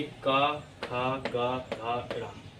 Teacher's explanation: कंठ ध्वनियाँ होती है जो हमारे जो गले से, यानी गले के जो ऊपर का हिस्सा होता है उसको हम कंठ कहते हैं